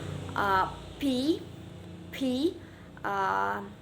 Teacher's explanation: suara konsonan yang dihasilkan oleh kedua bibir secara bersamaan